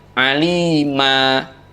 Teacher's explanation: Cara membacanya, suara tanwinnya dibaca fathah biasa dengan panjang 2 harokat. Tidak aliman tetapi alima. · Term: mad iwad